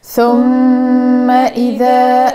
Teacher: رد بالي المطط الفتحة متاع الميم في ثم، رد بالي نقول ثم، رد بالي هذا خطأ، أنا باش نطول زمن الغنة في الميم المشددة، لكن الفتحة لا، رد بالك تمططها، لأنك إذا كان باش تطول شوية في صوتها باش يتولد عنها ألف مد.